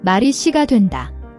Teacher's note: The SSI sound is a tense S, not a soft SH. Press your tongue firmly behind your front teeth and push air out without any H sound.